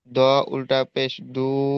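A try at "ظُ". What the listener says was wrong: এটা দ নয়, দ নয়, জ, জ, ত, জ। হ্যাঁ জ উল্টা পেশ বলেন।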